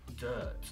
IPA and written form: dɜːt (Dirt)